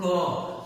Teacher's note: क बोलेंगे तो हम लोग के कंठ के माध्यम से ये स्वर निकलते हैं, जिसको हम लोग कंठ इसको बोलते हैं।